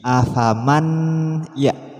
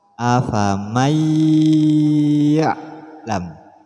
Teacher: artinya nun di sini tidak berbunyi